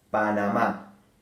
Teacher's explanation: Panamá se acentúa en la última sílaba